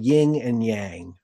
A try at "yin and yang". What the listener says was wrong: Yeah, you're adding A G.